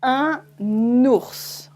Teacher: If you have une voyelle after un, for example, as in un ours, a bear, then you add the N in between. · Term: la liaison